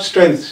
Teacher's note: the TH there in strength is voiceless and it takes S